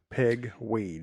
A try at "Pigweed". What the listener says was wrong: It just sounded like it just kind of ran together. Like it was almost like one word.